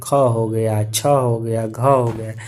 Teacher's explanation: मुख से ज्यादा हवा निकलता है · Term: महाप्राण